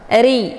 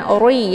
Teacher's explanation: ra ini dibaca tipis karena harokat ra-nya berkisrah. Ri, jadi bukan ori ya, tapi ri dengan bentuk mulut yang terbuka.